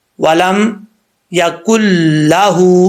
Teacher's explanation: لام کو لمبا کر دیتے ہیں، ولم یکن لہ، ایسا نہیں کرنا، ولم یکن لہ، ہا کو لمبا کرنا ہے، لام کو لمبا نہیں کرنا، کیونکہ ہا کے اوپر سٹینڈ پیش ہے، الٹا پیش ہے، لام کے اوپر نہیں ہے۔